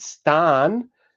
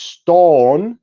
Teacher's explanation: the regular change from Old English a, such as a in sari, would create Middle English o and Modern English o.